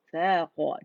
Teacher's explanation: سا الگ باریک ہوگا، قاف موٹا ہے